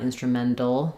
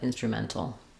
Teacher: just use a true T there. It's not going to be a D